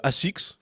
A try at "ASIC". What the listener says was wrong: Non, ASIC, il n'y a pas de S après. C'est apostrophe S, c'est pas. Tu prononces pas.